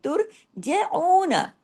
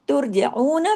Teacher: यमन तुर तुर जना में त बारीक र हैवी तुर जना जीम बारीक ऐन बारीक नून बारीक लेकिन ऐन को दो हरकात खींच